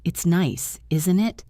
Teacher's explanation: If I say, "It's nice, isn't it?" and my voice goes up at the end, I am really asking a question because I am not sure. But if I say, "It's nice, isn't it?" and my voice goes down at the end, I am not really asking a question.